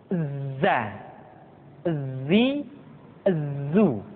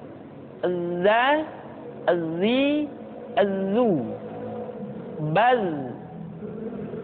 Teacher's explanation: Tetapi ingat, huruf za bersifat al-jahr. Artinya, ketika kita mengucapkan huruf za, suara kita mengalir, akan tetapi nafas tidak boleh mengalir.